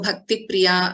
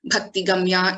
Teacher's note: wherever you are seeing the samyuktakshara there is a doubling happening